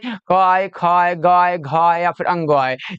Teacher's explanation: ये सब जो है ये कंठ से बोला जाता है।